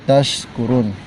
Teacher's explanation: tempat keluarnya tengah-tengah lidah ketemu dengan langit-langit atas